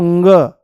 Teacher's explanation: नाक के जो नथूने हैं उन पर जोर पड़ेगा हवा के ज्यादा बाहर आने से · वायु जो है वो मुंह से नाम मात्र के लिए बाहर निकलेगी पर नाक से ज्यादा निकलने की कोशिश करेगी